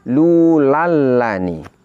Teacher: Karena nun sukunnya bertemu dengan huruf lam, maka nun sukun ini wajib diidghamkan. Inilah yang disebut dengan idgham bila gunnah.